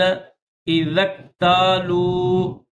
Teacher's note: ذال کو کاف کے ساتھ ملائیں گے